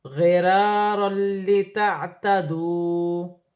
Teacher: 2 زبر کی تنوین کے بعد لام مشدد ہے، تنوین میں غنہ نہیں ہوگا